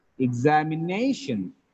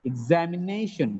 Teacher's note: One is primary stress, another is secondary stress. In this word, Zam gets the secondary stress, Nay gets the primary stress.